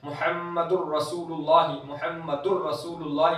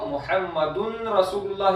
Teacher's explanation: तो दुर मुहम्मदुर, तो दाल के ऊपर दो पेश है, तनवीन है, नून साकिन और तनवीन के कायदे हैं, तो मुहम्मदुर दाल पर दो पेश है, तनवीन है, उसके बाद रॉ है, तो तनवीन के नून का इदगाम हो रहा है कहां पर, रॉ के अंदर, तो तनवीन का जो नून है वो पूरा दाखिल हो गया रॉ के अंदर, बिल्कुल भी आवाज नून की नहीं आती, इदगाम ताम।